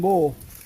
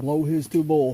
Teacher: And pay attention to how pronounces boil with a long O that is pretty much the same as the long O vowel when he says rolling, blow, and lower